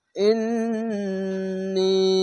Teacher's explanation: জেরের পাশে ইয়া সাকিন এক আলিফ টেনে পড়বেন, এখানে ওয়াজিব গুন্না